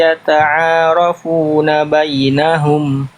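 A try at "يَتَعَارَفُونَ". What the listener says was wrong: Di sini karena tadi kecepatan jadinya ron-nya enggak termaksimalkan ya. Angkat lagi pangkal lidahnya ya.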